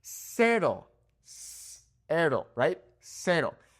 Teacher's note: with the C's, Z's, and S's in Spanish in Mexico, you're going to make a snap sound, like a snake